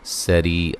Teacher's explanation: را کو باریک پڑھیں گے، سین کو باریک سیٹی سے ادا کریں گے، ری یا مدہ ہے، ٹھیک ہے۔